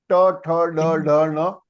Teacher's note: The tip of the tongue is touching your hard palate. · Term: murdhanya